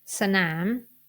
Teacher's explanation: a hidden after s because it is a leading consonant and I will pronounce it in Rising tone it is because s is a high class consonant and the